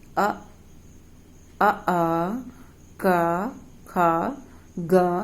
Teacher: आपको स्पष्ट लगेगा कि आपकी जिह्वा ज्यादा कंठ को स्पर्श कर रही है। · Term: कंठ वर्ण